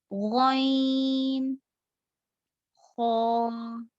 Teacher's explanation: और उसके बाद में देखा था कि हम और 2 हुर्फ अदा होते हैं जो हलक के मुंह की तरफ वाले हिस्से से, जो क्लोजेस्ट है माउथ के, वहां से निकलते हैं. वो जो है गॉइन, खौ, ये 2 हुर्फ निकलते हैं.